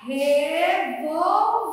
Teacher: a que nós pronunciamos com mais força é a sílaba ver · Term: sílaba tônica